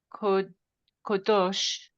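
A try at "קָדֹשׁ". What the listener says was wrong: not quite. The ah comes first. Kadosh,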